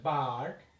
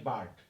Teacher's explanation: আমরা আর এর উচ্চারণ এখানে করি নাই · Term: আর কন্ট্রোল